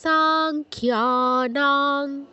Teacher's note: আমি কিন্তু সাংখ্যানাং বলছি না সাতে দীর্ঘ করে তারপর অনুস্বারে উচ্চারণ করছি